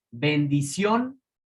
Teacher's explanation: lleva el acento en la O, donde está la fuerza